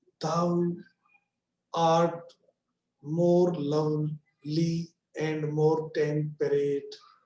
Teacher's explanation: Second is stressed, means art is stressed, not thou. · The first syllable of each foot is unstressed and the second is stressed. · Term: iambic pentameter